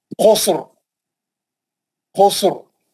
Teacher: सीन भी साकिन है, रा भी साकिन है, मोटा पड़ेंगे रा को, क्यों, तीसरे हर्फ पे पेश है